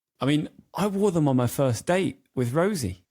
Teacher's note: So we've got date and Rosie as the stressors in the sentence.